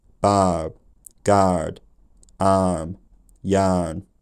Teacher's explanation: I just said the vowel and made it slightly R colored at the end · arm yarn this is a vow with a low tongue position in Flint's time probably something like low Central ah